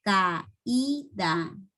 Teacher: en este hiato la vocal cerrada suena más fuerte que la vocal abierta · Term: hiato acentual